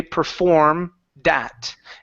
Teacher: connect the D sound to the word at. So, instead of saying performed at, you can say perform that